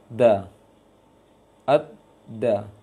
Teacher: ujung lisan dengan pangkal gigi atas makhrajnya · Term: dal